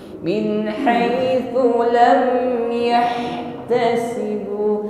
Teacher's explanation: Huruf ha-nya hamas, nafas alirkan dan rokhawah, bunyi hurufnya jalan.